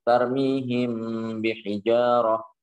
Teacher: Jadi cara baca ikhfa syafawi adalah dengan mengatupkan kedua bibir.